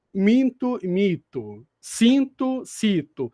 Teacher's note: minto e mito alterou o significado só por causa da vogal nasal